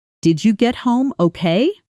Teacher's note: Notice how okay lifts up at the end, almost like it's reaching upward. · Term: rising yes or no question